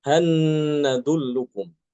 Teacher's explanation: dibacanya hatta halwiba surah e almutfifin di akhir ayat tuh ya dibacanya hatwiba kemudian hal nadukum surat saba ayat keet7 dibacanya hanadullukum dengan gunah ya hanadullukum ya dimasukkan ke nun disertai dengan ghunah